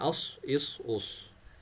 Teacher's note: स्वाद heavy letter है तो इसको अपने मोटा पढ़ना है